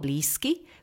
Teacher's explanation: Slovo blízky vyslovujeme s, z je totiž znelá párová, k je neznelá párová a tak sa prvá z nich z zmení na svoj neznelý pár s.